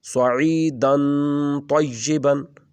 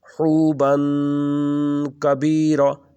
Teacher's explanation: صعیدن کی دال کو لمبا کیا ہے، حوبن کی با کو لمبا کیا ہے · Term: اخفاء